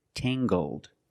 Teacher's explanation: using the nasal sound and the hard g, tangled. Her hair is very tangled.